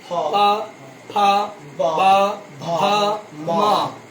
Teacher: ये जो ऊ प फ ब भ म इसका उच्चारण स्थान ओष्ठ है। देखिए आप, जब हम प बोलते हैं दोनों ओष्ठ मिलता है कि नहीं?